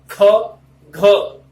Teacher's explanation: ऐसे वर्णों का उच्चारण होता है जिनमें हवा प्रेशर से निकाली जाती है, बहुत ज्यादा प्रेशर लगता है, इसलिए महाप्राण बोला। · ख और घ के उच्चारण के दौरान हमें देखो हवा को निकालते वक्त कितना कंपन करना पड़ता है या जोर लगाना पड़ता है, प्रेशर से दबाव पड़ता है।